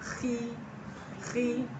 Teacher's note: Dia hurufnya tebal, tapi kalau kasroh dia terdengar tipis suaranya. Kata para ulama huruf kho dia huruf tebal istilah. Tapi ketika kasroh dia suaranya tipis. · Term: tafkhim nisbi